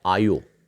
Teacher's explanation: पहली विशेषता आ प्रत्यय औ हो जाता है। इसे ओकारांत की प्रवृत्ति कहते हैं।